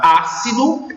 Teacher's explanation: o A é a sílaba tônica e esse A recebe o acento.